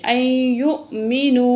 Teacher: حمزہ زبر یا، این، یا پیش حمزہ، یو، حمزہ کو جھٹکے سے پڑھیں گے، مینو، تو واو پہ مد ہے تو 1 الف کے برابر، یہاں جو ہے مد ہے، یہ بڑی مد ہے، 4 الف کے برابر کھینچ کے پڑھیں گے